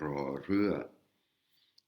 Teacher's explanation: Cette lettre-ci, c'est la lettre la consonne R re Ré équivalent du R, mais c'est un R roulé comme les espagnols